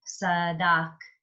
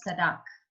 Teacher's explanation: You just write it that there's no additional ah sound or o sound or u sound because all you got was sadak.